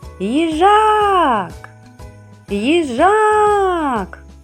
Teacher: Куди падає наголос? Так, наголос падає на звук А.